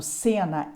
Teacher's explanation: cena é uma vogal oral com timbre fechado